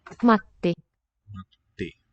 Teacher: There you hear that little bit of silence in the middle of the word. Matti. That means we have a double consonant.